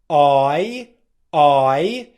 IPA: eɪ